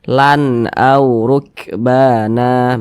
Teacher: tanda baca tanwin yang setelah hanya huruf hamzah hukumnya izhar halqi maka dibaca jelas tidak berdengung baca pendek saja